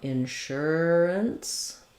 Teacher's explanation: what we want to be stressing is on the sure syllable. In the IPA, you're going to see that marked with a line before the sure syllable.